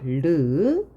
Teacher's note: 그 다음 잇몸 소리이면서 비음인 거 느. 잇몸 소리이면서 유음인 거 르. 센 입천장 소리 하나밖에 없고요.